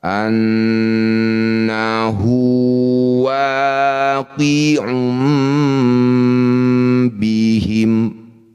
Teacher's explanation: Dumah tanwin bertemu ba disebut bacaan namanya iqlab. Dumah tanwin kita tukar dengan mim bunyinya. Nah, bibir, dengungkan dua harakat. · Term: iklab